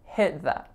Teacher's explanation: there's an unreleased T on the word hit